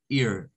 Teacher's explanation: La EA suena a una especie de I larga y decimos ear.